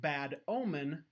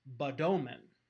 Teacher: The D at the end of bad becomes a perfectly acceptable onset for the O at the beginning of omen, because we are now no longer considering a word boundary to be a syllable boundary.